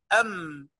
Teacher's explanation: هتلاقي الميم طلعت من الشفة